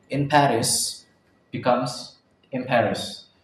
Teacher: N becomes M before bilabial P. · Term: Assimilation